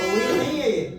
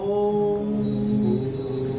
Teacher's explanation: ओ पे आप ज्यादा समय दीजिए, 3 गुना, अर्थात दीर्घ से भी ज्यादा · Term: प्लुत स्वर